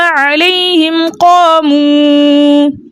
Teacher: میم ساکن کو اس کے مخرج اور صفات کے ساتھ خوب ظاہر کر کر پڑھیں گے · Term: اظہار شفوی